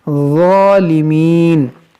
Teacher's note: ज़ा को नरमी से और मोटा करके पढ़ेंगे